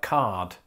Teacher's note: most of Britain would have pronounced the R in words like card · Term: rhoticity